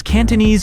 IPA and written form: ˌkæn.təˈniːz (Cantonese)